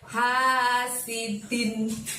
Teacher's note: Pakai tenggorokan bagian tengah yang lembut kayak kita sedang nguap kalau ngantuk ya